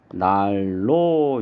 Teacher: 4번 난로 같은 경우에는 니은하고 리을하고 만나서 앞에 있는 니은이 뒤에 유음의 영향을 받아서 리을로 이렇게 바뀝니다. 그래서 발음을 하면 날로 이렇게 발음이 되겠죠.